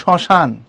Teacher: যেমন শ্মশান শব্দে তালব্যস্যর সাথে মফলা আছে, এই জন্য পড়ার সময় আমরা শ্মশান পড়ি না, আমরা পড়ি শ্মশান, অর্থাৎ নাকের ঝোঁক দিই, চন্দ্রবিন্দুর চাপ দিই